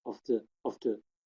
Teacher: So the speaker isn't saying really a dental fricative, but a dental plosive, or maybe an alveolar plosive.